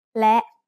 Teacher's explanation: is a high tone because it has an initial low-class consonant with a short vowel and a dead stop